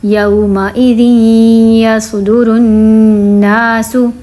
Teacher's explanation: اب دیکھیں یہ 2 زیر پھر سے تنوین آ گئی ہے، تنوین کے بعد ہے پھر سے یا حروف یرملون، ادغام ہوگا غنے کے ساتھ